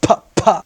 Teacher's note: Las consonantes oclusivas son las que tienen como un bloqueo total del aire que después sale como de una manera de explosión